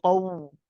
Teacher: Be careful when you say qawma, because the qaf is heavy, it's very easy to make the wow heavy and say qaw